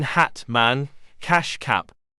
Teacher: This vowel is a front vowel, since the front part of the tongue is raised when being articulated. It is also an open, low vowel. This means that the tongue is in a low position, with the jaw also being lowered. The lips are a little spread.